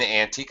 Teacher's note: the suffix itself is the part that gets the primary stress